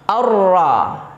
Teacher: Alif lamnya tidak dibaca, tetapi langsung masuk ke huruf ra yang bertasydid atau huruf yang bertasydid berikutnya. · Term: idgham syamsi